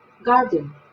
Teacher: garden se pronuncia con el acento en la A